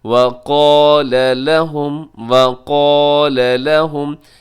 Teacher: وقال اس میں قاف موٹا پڑھا جائے گا، الف بھی موٹا پڑھا جائے گا۔ الف جو ہوتا ہے وہ ہمیشہ پہلے والے حرف کا محتاج ہوتا ہے، اگر اس سے پہلے موٹا حرف تو الف بھی موٹا ہو جائے گا، اگر اس سے پہلے باریک آ گیا تو الف بھی باریک ہو جائے گا۔